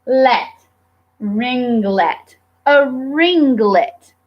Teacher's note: That NG changes the vowel sound of the I slightly, but it still is not an open sound. So we have two syllables that are closed, and we have a digraph.